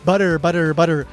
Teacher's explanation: butter actually has this kind of flap R sound, right?